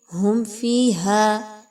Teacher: میم ساکن کے بعد فا کا حرف آ گیا اظہار شفوی کیا جائے گا کسی طرح کا غنہ نہیں ہوگا. فا زیر یا فی یا مدہ ہے 1 سے 2 الف کے برابر اس کی ادائیگی رکھیں گے.